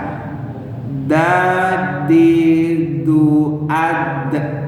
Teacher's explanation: Makhrajnya di mana? Kepala lidah dengan urat gigi atas. Lidahnya ke urat gigi atas.